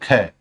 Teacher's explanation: आप ख बोलकर देखो बहुत ज्यादा भाप आ गई। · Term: महाप्राण